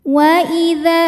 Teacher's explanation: Bismillahirrahmanirrahim waidza ini hukumnya adalah sebab ada Alif didahului harakat fathah maka huruf Dal kita panjangkan Hanya dua harakat saja